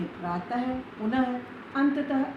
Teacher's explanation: अब विसर्ग का उच्चारण हा की तरह होता है।